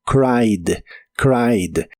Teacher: En el pasado es cried, es regular. Así que en el pasado termina con e d, pero solo se pronuncia la d